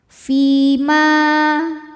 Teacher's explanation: Sebab ada ya sukun sebelumnya berharokat kasrah, maka huruf fi panjang 2 harokat. Fi ma mad tabi'i zahiri.